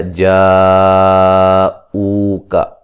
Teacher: جیم پہ جو مد ہو رہی ہے، مد واجب ہے، 3 سے 4 الف کے برابر اس کو لمبا کریں گے۔